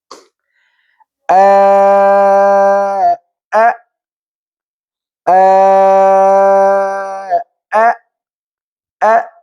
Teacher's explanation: আওতাউরুস সৌতিয়া, ধ্বনিতন্ত্র সম্পূর্ণ বন্ধ থাকবে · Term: হামজা